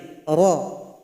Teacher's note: Yaitu ujung lidah tempelkan ke langit-langit. Ra ini punya sifat yang namanya takrir, harus ada pengulangan. Namun jangan banyak. Ra itu salah, pengulangannya cuma sekali.